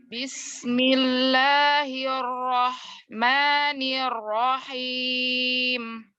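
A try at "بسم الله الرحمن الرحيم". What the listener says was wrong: Ya, coba jangan tinggi nadanya, samain aja. Bismillahirrahmanirrahim. Karena kalau Bismillahirrahmanirrahim, jadi kayak naik turun. Padahal mat itu di udara aja, kayak naik gitu matnya.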